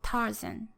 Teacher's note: Tarzan in English has 2 syllables, and the stress is given to the first syllable. So there's this strong, weak, long, short, up and down rhythm, Tarzan. · the first syllable, tar, is longer and higher in pitch than the second syllable, zan